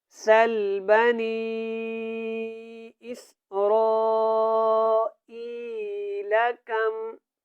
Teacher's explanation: جب اس کو ہم نے پڑھنا ہے تو یہاں پہ مد متصل ہے، اس کو آپ نے کھینچ کے ادا کرنا ہے